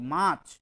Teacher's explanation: আমাকে মানে মহাপ্রাণ ধ্বনি খরচ করতে হচ্ছে অর্থাৎ প্রাণবায়ুকে বেশি খরচ করতে হচ্ছে